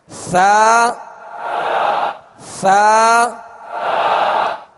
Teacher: زبان کا سرا اوپر کے سامنے والے 2 دانتوں کے اندرونی کنارے، اندرونی کنارے، اس سے آپ لگائیں گے تو انشاءاللہ ثا ادا ہوگا، اور اس میں اگر نرمی کے ساتھ ہلکا لگائیں گے تو یہ نرمی کے ساتھ حروف پڑھے جائیں گے، اس میں سختی پیدا نہیں ہوگی.